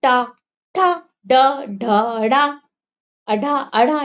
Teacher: ये सब क्या हुआ हमारी जीभ टच हुई ऊपर जाके तालू में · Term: ट वर्ग